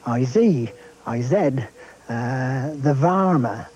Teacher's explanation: that use of the voiced zed instead of S and V instead of F